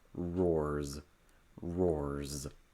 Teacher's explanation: So that's voiced, so that means that when you say roars, the S will be voiced, so that S will sound like a Z